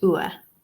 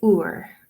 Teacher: according to the IPA chart, we say it ua. I, in my accent, say ur.